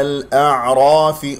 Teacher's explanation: هنا لدينا همزة وعين، دائما انتبه عليه لأنه الحرفين متجاورين في المخرج